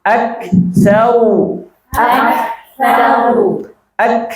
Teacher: Ibu tahan dulu ak kemudian mengalir napas sedikit